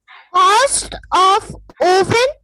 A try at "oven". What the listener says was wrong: Oven नहीं होता बेटा, it's oven. Say oven. It's written O, but we pronounce it as a. Oven.